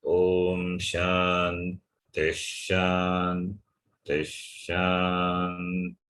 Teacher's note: The first Shanti, the T has got Anudata swara. The second Shanti also Anudata swara. The third Shanti is Swarita swara.